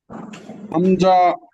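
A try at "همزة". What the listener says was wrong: হ্যাঁ, হামজা বলে শব্দ ধরে রাখা যাবে না, ছেড়ে দিতে হবে সাথে সাথে। হামজা। এই যে আলিফ যেরকম ছেড়ে দিয়েছিলাম আলিফ, ঠিক এরকম এখানে হামজা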